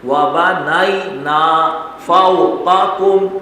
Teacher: قاف اور کاف ایک موٹا قاف اور ایک چھوٹا کاف ساتھ ساتھ